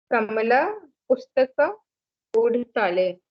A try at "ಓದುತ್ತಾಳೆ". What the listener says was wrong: ಓದುತ್ತಾಳೆ. ಓಡ್ತಾಳೆ means running. ಓದುತ್ತಾಳೆ means reading. So you should use the right sound. ಓದುತ್ತಾಳೆ.